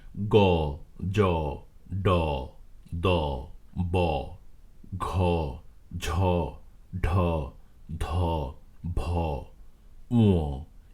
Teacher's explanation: যে সকল ধ্বনি উচ্চারণের সময় ভোকাল কর্ডস বা স্বরযন্ত্রে কম্পন ঘটে সেসব ধ্বনিসমূহকে ঘোষ ধ্বনি বলে